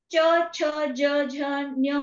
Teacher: तुमची जीभ आहे ती वरच्या दिशेला जात आहे आणि थोडी गोलाकार दिशेमध्ये जाते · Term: च वर्ग